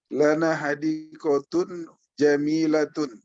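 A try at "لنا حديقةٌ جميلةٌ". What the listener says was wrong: Iya gitu, kembar persis.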